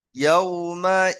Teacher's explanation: এখানে ইদগামে নাকিস গুন্না আছে তাই একটু নাকে তুলে গুন্না দিতে হবে